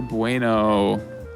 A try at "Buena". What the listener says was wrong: That's not Bueno. It's Buena. There's an A at the end.